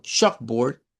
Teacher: cuando la pronunciamos como chalkboard, nos encontramos con dos sonidos de O cortas. En este caso, aplicada a la letra A, porque está a la par de la L, y en este caso, aplicada al diptongo OA, que suena como O, board, board.